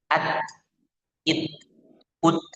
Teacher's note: huruf yang bersifat syiddah dan ada hamsnya yaitu huruf ta